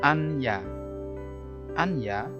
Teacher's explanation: Anya, nun sukun ketemu ya, itu menjadi idgham bihunah. Cara membacanya ya memasukkan ke huruf berikutnya yaitu huruf ya dengan mendengung.